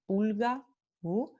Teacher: La vocal U se describe como una vocal alta, posterior, redondeada, como en la palabra pulga